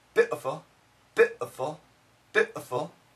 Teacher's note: in the UK, I think they call it the cocknney accent, the word beautiful has a glottle stop and the word beautiful sounds like bitful, bit beautiful, bitful, beautiful. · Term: glottal stop